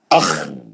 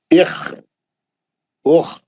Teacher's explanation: خا کا آواز کھردرا ہوتا, رف آواز, بالکل رگمال مارے تو کیسا کھر کھر آواز آتا ہے, جیسا کھکارے تو کیسا آواز آتا, ویسا اخ, ہے نا, اخ, اوخ.